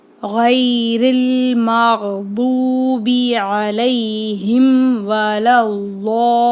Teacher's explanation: பெரிய மத்து வந்திருக்கு, 7 அலிஃப்க்கு நீட்டி ஓதணும்.